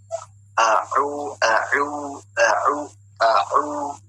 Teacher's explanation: Jadi nggak ada aliran ainnya itu di hidung, tapi di tenggorokan.